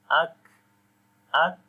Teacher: This k sound is the quality of hams. We are continuing the breath. So remember this, when we continue the breath in hams quality, then the weakness comes.